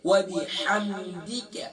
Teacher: دال زیر دی نہ کہ دال زیر دے